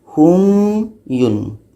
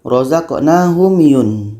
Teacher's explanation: Kita baca hum tu bukan panjang tapi kita meletakkan makhraj mim ni dulu. Jangan kita baca rozaqnahum yun.